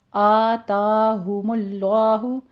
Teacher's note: آ تا دونوں جگہ 2 کاؤنٹ کرنا ہے، برابر رکھنی ہے آواز ، اتا نہیں کہنا اس کو، آتاہم اللہ، فتح قائمہ ہے